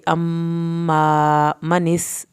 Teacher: सीन को सीटी की आवाज़ के साथ पढ़ेंगे